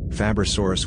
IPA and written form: ˌfæbrəˈsɔːrəs (Fabrosaurus)